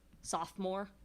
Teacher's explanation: Sophomore has a strong syllable to begin with. It's a feminine rhyme.